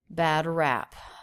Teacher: And he releases the P as well as some extra air.